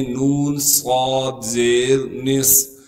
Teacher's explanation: صاد کو موٹا بھی کریں گے اور صاد میں سیٹی بھی ادا کریں گے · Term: سیٹی والے حروف